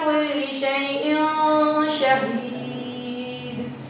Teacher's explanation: یہاں پر نون تنوین تھا اور شین جو ہے حروف اخفاء میں سے ہے، تو اسی لیے ہم نے یہاں پر غنہ کیا